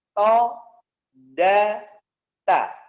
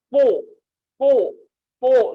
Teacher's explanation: ujung kepala lidah menempel di gusi gigi seri atas. Jadi ditempelkan ke gusinya.